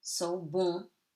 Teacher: Alright, so remember what we told. ON before a consonant gives you a nasal sound on